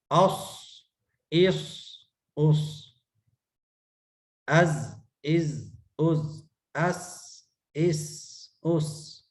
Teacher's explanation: آگے ہے صفیر، اس میں صاد ز سین، سیٹی کی آواز ہوتی ہے اس میں. صاد ز سین، اس میں سیٹی کی آواز دیتے ہیں.